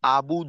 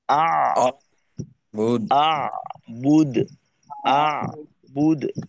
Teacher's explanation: এখানে যেন আবুদ হয়ে না যায়। আবুদ হলে কিন্তু আইন বাদ চলে যাবে।